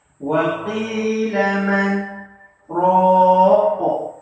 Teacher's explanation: Man tu berhenti sat. Depan man berhenti sat 2 harakat tanpa bernafas. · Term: saktah